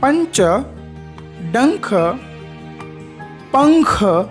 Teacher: इनके उच्चारण में नाक से अधिक सांस निकलती है और मुंह से कम सांस निकलती है। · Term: अनुस्वार